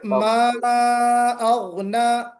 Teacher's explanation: حرف مد کے بعد حمزہ ہے، مد ہوگا مد منفصل